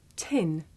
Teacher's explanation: did you notice how the puff of air at the beginning of tin makes the paper move